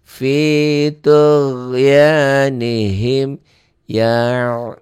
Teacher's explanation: Ya'mahuna dihentikan jadi panjang, bukan jadi pendek ya. Maksudnya dibaca apa adanya, pendek, tidak panjang.